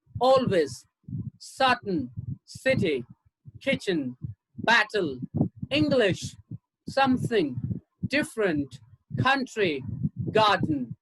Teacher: here you have words with two syllables with the stress on the first syllable